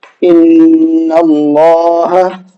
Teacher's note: حمزہ نون زیر ان، نون لام زبر نل، ان لام کھڑا زبر لا، ان اللہ، ہا زبر ہا، ان اللہ۔ تو دیکھیے یہاں اللہ کے نام سے پہلے نون پر زبر ہے، اس زبر کی وجہ سے ہم نے اللہ کے نام کو منہ بھر کے پڑھا ہے، پر کر کے پڑھا ہے